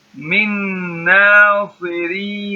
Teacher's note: the ra here, because it comes with kasra, it is a light ra